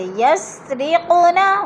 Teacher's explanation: قوف حروف قلقلہ میں سے ہے اور ساکن ہے، ادھر قلقلہ کریں گے، ہلا کر پڑھیں گے